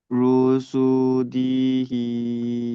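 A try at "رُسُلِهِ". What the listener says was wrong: দি নয়, দি নয়, সিনের পরে এটা কি আছে দেখেন তো।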